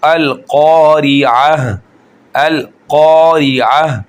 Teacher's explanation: क़ाफ को खींचकर एक अलिफ के बराबर मोटा करके, क्योंकि अलिफ मद्दा है, अलिफ से पहले जब ज़बर आ जाएगी तो अलिफ मद्दा बनता है। · अब यहाँ पर हम क़ा को एक अलिफ के बराबर खींचेंगे और क़ाफ को मोटा करके कारिया नहीं करेंगे।